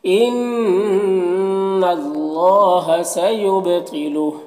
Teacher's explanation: ان اللہ نون مشدد غنہ ہوگا، اور اللہ کلام سے پہلے نون کے اوپر زبر ہے تو اللہ کلام کو پر پڑھیں گے۔ کھڑا زبر ہے، ایک الف کے برابر کھینچیں گے۔